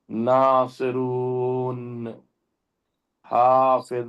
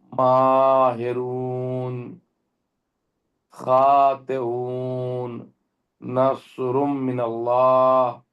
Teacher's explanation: تو نون جب بھی ہم ادا کریں گے تو نون ادا کرتے ہوئے ہمارے زبان کا نوکیلا جہاں سے حصہ ہے اور سائڈ کا تقریباً 1 انچ کا حصہ، یہ حصہ دانتوں سے اوپر لگتا ہے، لہٰذا اس کو نون کا مخرج کہا جاتا ہے.